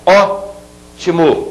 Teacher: ótimo eu tenho a última a penúltima e a anti penúltima a anti penúltima é a que é mais forte portanto se trata de uma palavra proparoxítona